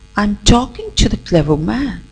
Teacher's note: Here, talking and clever man, both these words are stressed and rest of them are unstressed. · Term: sentence stress